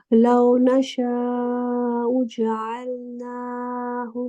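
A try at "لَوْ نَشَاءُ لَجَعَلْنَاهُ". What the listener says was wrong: जअल से पहले ला भी है।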